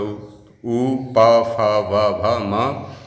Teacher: उ, प, फ, ब, भ, म और उपदमानी, इनका उच्चारण स्थान ओष्ठ हो जाएगा।